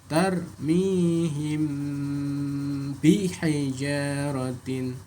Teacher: Mim sukun bertemu ba, maka dibaca ikhfa syafawi. Ikhfa artinya samar, syafawi artinya katupan dua bibir, yaitu mim.